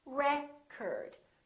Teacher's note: if it's a noun it's pronounced as record the first syllable is stressed